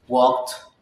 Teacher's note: d becomes t after voiceless consonants